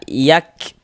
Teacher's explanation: Jadi, ada nafas yang mengalir ketika kita mengucapkannya. Namun, jangan dibaca yaq yaq begitu. Jangan. Huruf kaf itu bukan huruf qalqalah.